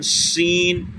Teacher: شین وہی بیچ زبان تالو سے مل کر شین